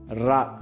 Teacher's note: நாவின் நுனி மேல் அன்னத்தின் மையப்பகுதியை உரசுவதால் ரகரம் தோன்றுகிறது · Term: வல்லின ரகரம்